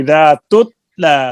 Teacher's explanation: اس میں صفت شدت ہے جس میں آواز بند ہو جاتی ہے تا میں. اجیدو کا قطع بتا، آواز بند ہو جاتی ہے تو لہٰذا اس کو ہلانا، اکثر لوگ یہاں غلطی کرتے ہیں، اس کو ہلا دیتے ہیں.